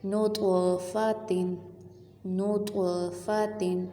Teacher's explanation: طا کو ہم نے ہلا کے پڑھنا ہے، کیونکہ یہ حروف قلقلہ ہے